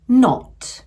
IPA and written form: nɒt (not)